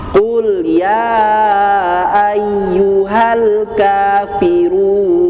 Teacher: yang saya ambil adalah mad jaiz dengan panjang empat harakat. Kan boleh dua, boleh tiga, boleh empat, boleh lima.